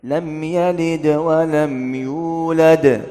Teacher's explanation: Lam yalid ini ada qalqalah tapi qalqalah sughra. Qalqalah dikit aja.